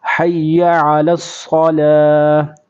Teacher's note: صاد کو پر کریں گے، عین لام کو صاد کے ساتھ ملائیں گے